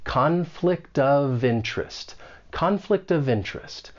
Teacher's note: we can link that final consonant sound in conflict with the beginning vowel sound in of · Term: linking